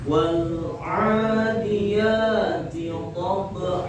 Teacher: Ketika tanwin fathah diwakafkan, maka di sini sepakat seluruh ulama ahli qiraat sepakat atau ittifaq membaca dua harokat, dan ketika mewakafkan harus benar-benar dua harokat, dan akhirnya itu jangan bau huruf hamzah